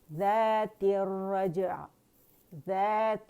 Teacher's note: عین کی آواز جو ہے تھوڑی سی چلے گی کیونکہ وہ بین بین لیٹر میں سے، لن عمر میں سے ہے اور اس میں توسط ہوتا ہے، درمیانی آواز چلتی ہے، ٹھیک ہے.